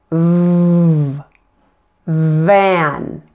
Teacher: And now add voice to pronounce a V. You can feel your vocal cords vibrating here in your throat as you say the V sound.